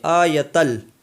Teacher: اس لیے تنوین کو لام میں ملا دیے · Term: ادغام